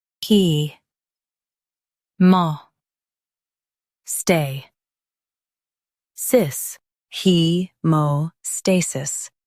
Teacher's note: Stress stay and keep sis soft.